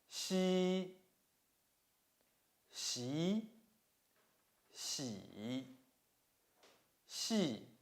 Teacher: The surface of the tongue approaches the hard palate without reaching it, leaving a gap in between.